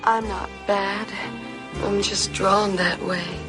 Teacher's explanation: we have Kathleen Turner with a very deep, sultry, kind of just, you know, melodic voice